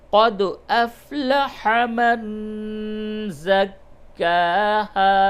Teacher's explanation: نون ساکن کے بعد زا آیا، اس جگہ پہ اخفا ہوگا